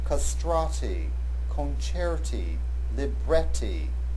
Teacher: Notice that the accent is on the second syllable of these words.